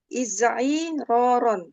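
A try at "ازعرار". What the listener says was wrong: Nah, sahih.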